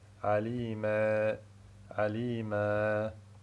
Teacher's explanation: Donc, lorsqu'il a dit alima, sa langue, elle n'est pas restée à la position du repos. Donc, il a fait lever le milieu de sa langue, et c'est ça qui a donné l'alif al-mumala.